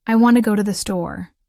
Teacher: The stress lands on want, go and store because those words carry the most meaning. The other words I, to, and the are reduced and said quickly.